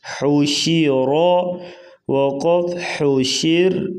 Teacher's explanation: را وقفاً جو ہے بریک پڑھی جائے گی، اگر ملا کے پڑھیں گے تو حوشی را تو پھر را موٹی پڑھی جائے گی